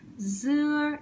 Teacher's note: Dưa is a flat tone and it means watermelon.